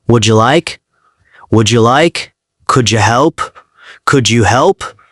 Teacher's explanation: When D or T sounds are followed by U, they blend with the J sound. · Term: Woulda, coulda, shoulda